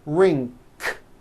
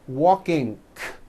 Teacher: Some people who speak English as a second language have gotten into the bad habit of adding a K release sound, k, k, like that, after an NG ending. For example, in the word ring, it becomes ring, k.